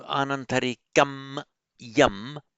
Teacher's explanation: They meet together and a sandhi applies, and where you wouldn't do this in Sanskrit, but you quite often see it in Pali. So anantarikam yam, the kam yam becomes kanyam, and that is what explains this double nya there.